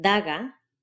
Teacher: pronounced with the tip of your tongue against the teeth